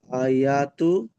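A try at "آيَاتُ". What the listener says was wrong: আর টান দিয়ে বলেন, আমি যেমন টান দিচ্ছি যেমন টান দেন। আয়াতু।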